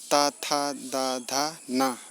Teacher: आपका देखिए जीभ जो है दांत को ठोकर मार रहा है, तो इसे दंत कहते हैं।